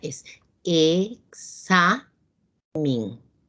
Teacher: separamos la palabra es el sha min entonces como pueden observar la mayor fuerza de voz recae en la penúltima sílaba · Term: sílaba tónica